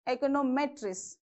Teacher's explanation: the stress mark shifts to the M, econometrics.